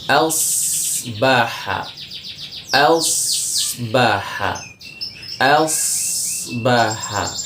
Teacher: saat masuk ke shad itu berarti makhraj shad dengan ujung lidahnya dia berbarengan naik ke atas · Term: shad sukun